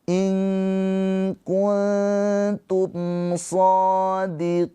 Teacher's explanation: Jadi ini izhar syafawi mimnya dibaca dengan jelas.